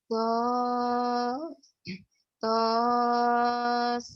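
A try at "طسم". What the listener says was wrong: sin aslinya. Bukan, iya sin kan huruf aslinya. Ingat ya, bacanya huruf aslinya, bukan huruf yang sudah berbaris. Jadi baris ini tanda ini tidak fungsi untuk sebagai tanda tanda baca, tapi tanda ini berfungsi untuk menandakan panjangnya bacaan huruf itu. Jadi jangan tosa, to sin nun mati ketemu mim idgham mimi.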